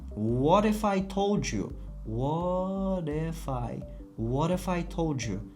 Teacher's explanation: Bu t'imiz bizda d ga o'zgarar ekan.